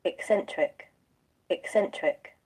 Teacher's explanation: এই কের পরে একটা শ্বাসাঘাত আছে, স্ট্রেস।